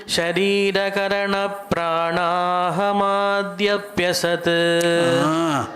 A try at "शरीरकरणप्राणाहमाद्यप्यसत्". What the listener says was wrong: Why are you making it so long? Sharira karana pranahamadhyapyasad